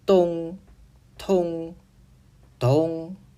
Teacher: 发音部位同为齿龈与舌尖，而发音方式不同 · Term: 三分对立